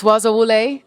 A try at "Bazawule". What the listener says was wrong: Bazawule. I didn't hear the Z though.